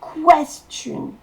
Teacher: Et la syllabe accentuée, c'est quest.